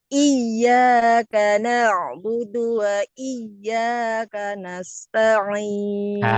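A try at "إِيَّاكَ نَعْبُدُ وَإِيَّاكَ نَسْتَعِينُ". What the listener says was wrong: Tidak boleh takaluf, Bu. Iya, berlebih-lebihan. Takaluf berlebih-lebih. Jadi iya, nadanya sama aja. Iyyaka na'budu wa iyyaka nasta'in. Iyyaka, iyyaka. Yang penting neken, Bu.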